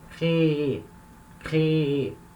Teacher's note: Eu falo duas vezes, créer, créer, porque a sílaba tônica é a última, tá? Então, eu tenho que acentuar essa sílaba tônica na hora de falar.